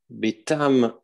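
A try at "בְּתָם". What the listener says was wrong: On dit ici Betom. Le kamad se prononce O ici.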